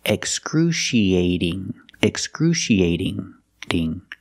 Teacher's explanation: After the A, we have the letter T. And the T is between vowels, so it's going to sound like a fast D.